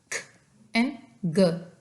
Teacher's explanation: व्हीलर plosive बनते हैं जब हमारा जो बैक ऑफ द टंग है वो टच करता है सॉफ्ट पैलेट को